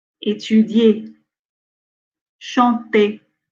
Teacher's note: So at the end, we have ER words that ER is not pronounced as R parce que ça forme un digramme.